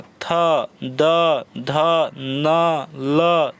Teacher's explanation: जीभ जो है दांत में, दंत में सटता है, टच करता है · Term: दंते वर्ण